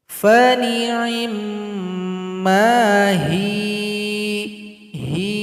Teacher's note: Cara berhenti di sini, ya disukunkan huruf ha yang sebelumnya yang kasrah dipanjangkan dua ketukan karena dia sudah menjadi mad asli atau mad tabi'i.